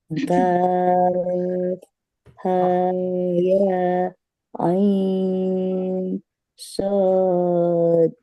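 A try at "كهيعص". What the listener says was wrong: Ya, baru 4 harokat, Bu. Ambil nafas dulu.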